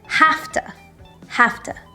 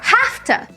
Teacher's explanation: The V sound in have to becomes like an F sound, have to, and we say it really quickly together, hafta.